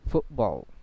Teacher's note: because T it came after vowel sounds, so that's why it can be glottalized